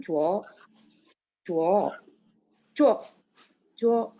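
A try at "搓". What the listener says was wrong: Iya, nadanya bagus Bu. Tinggal C itu Ibu lebih banyakin anginnya. Jadi, cuo.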